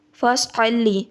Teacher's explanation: صاد کو جب ہونٹ گول کریں گے تو صاد کو پر کر کے ادا کرنا ہے،